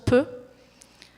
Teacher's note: les bilabiales, où ça se forme au niveau des lèvres, le son be, le son peu.